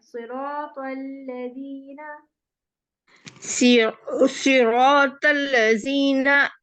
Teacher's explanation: सिरातल में लाम नहीं मोटा करेंगे